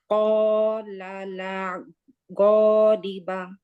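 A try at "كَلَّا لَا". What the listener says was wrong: কলালা গলিবা। এইখানে লাতে আলিফটা টান হবে।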